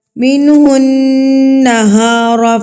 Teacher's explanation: نون مشدد پر بھی غنہ کیا جاتا ہے، یعنی کہ ناک میں آواز کو روکا جائے گا.